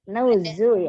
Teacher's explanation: hati-hati di huruf zanya tidak ditebalkan, tidak nuzu.